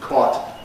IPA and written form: kɒːt (caught)